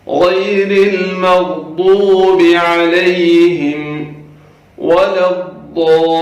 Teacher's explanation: ضاد ہے، اس کو برابر ادا کریں، پر کر کے پڑھنا ہے